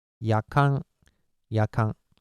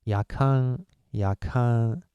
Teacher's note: the last nasal sonant is not n sound. It's Japanese nasal consonant.